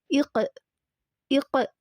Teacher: அப்படி காஃப் எடுத்தோம் அப்படின்னா அதே தான், காஃப்க்கு ஸ்கூன் போட்டு அதுக்கு முன்னாடி அலிஃப்க்கு வந்து கெஸ்ரா விட்டோம் அப்படின்னா, வச்சோம் அப்படின்னா இக் இக் அப்படின்னு நம்ம படிக்கும் போது நம்ம வந்து அங்கே வந்து இக் அப்படின்னு படிக்கிறது வந்து கல்கலாக்கு நம்ம வந்து அசைவு கொடுக்குறோம். அந்த காஃபை வந்து அசைக்கிறோம், அசைச்சு கொடுக்குறோம்.